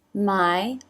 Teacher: lips pressed together for the M, jaw drops, here's the I, as in by diphthong, you could see the tongue come up towards the M.